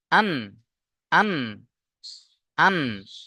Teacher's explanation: জিভের আগা এবং তার বরাবর উপরের তালুর সাথে লেগে উচ্চারণ হবে। জিভের আগা তার বরাবর উপরের তালু, মানে তার উপরে এই যে তালু আছে, এই তালুর সাথে লেগে উচ্চারণ হবে নুন।